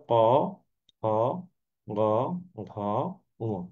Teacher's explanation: এই কটা আমাদের কোথা থেকে উচ্চারণ হচ্ছে, কণ্ঠ থেকে উচ্চারণ হচ্ছে